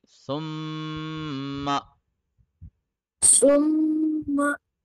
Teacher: Where do we touch our tongue in the letter sa? On the top tooth edge.